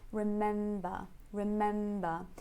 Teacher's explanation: in the stress syllable we have the egg vowel again · the first syllable is very relaxed and unstressed don't soften it and then in the main syllable in the